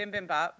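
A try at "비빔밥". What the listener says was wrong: It's like B-O-P at the end, not B-A-P.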